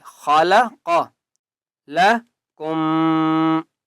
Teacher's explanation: خا کو موٹا کریں گے اور قاف کو بھی موٹا کریں گے، خلق لکم، کاف میم پیش کم، میم کے اوپر تشدید غنہ کریں گے۔